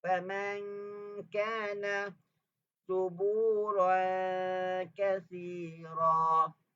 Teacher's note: Nampak tak bunyi dengungnya tu nipis berbanding dengan dengung isti'la.